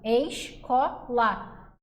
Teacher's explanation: Em escola, observe que tanto o S quanto o C produzem som. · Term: Encontro consonantal